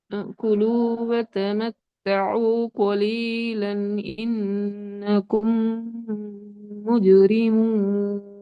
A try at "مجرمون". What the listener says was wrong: முஜு ரெண்டு வரக்கூடாது. மூஜி. மூஜி. இஜித சவுண்ட் தான் ஜீம கலக்கணும். ரீ வராது. முஜிரி.